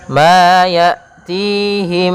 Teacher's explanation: suara mimnya masuk kepada mim yang kedua. Ma ya'tihim sambil ditahan gunnah. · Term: idgham mimi